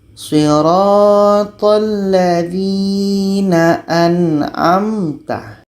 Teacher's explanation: Tengah-tengah saja anamta. Bukan dialirkan dan bukan pula ditahan.